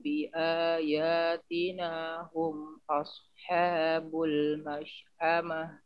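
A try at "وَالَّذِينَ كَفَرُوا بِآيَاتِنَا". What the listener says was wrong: Hati-hati di kafaru, jangan kafaru, jangan kafa. Kafaru, tipiskan lagi. Walladzina kafaru bi ayatina. Tipiskan lagi suaranya.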